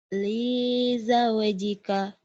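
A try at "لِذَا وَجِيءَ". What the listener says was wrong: linya kenapa panjang? Lizaujika.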